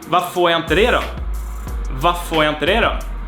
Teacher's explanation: basically we have varför it becomes like a long F sound here. Varför, or like 3 Fs that we extend the F to contain the whole second syllable here.